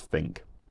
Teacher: change of th turning into F in certain situations